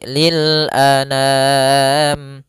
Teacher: Jangan dibaca dengan dengung atau dibaca dengan masuk hidung